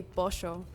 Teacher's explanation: So in the capital of Argentina and Uruguay, we have seismo, which means that we pronounce the double L as sh sound. So we would say pollo.